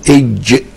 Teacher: فيقول انت بتنطقها لازم تقول اج علشان تعرف تنطق الحرف، تجيب الف ساكنه قبليه. واج دي مركبه كانها بين الدال والشين. الاجهزه الحديثه جابت الحكايه دي وعرفت ان الجيم مركبه بين الدال والشين.